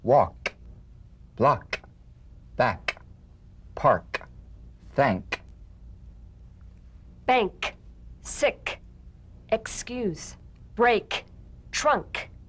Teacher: With the tongue in the G position, let the tongue spring away in the soft, unvoiced click of the K drum beat. Feel a crisp tap and a pulsation in the back of the tongue. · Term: unvoiced tongue back plosive consonant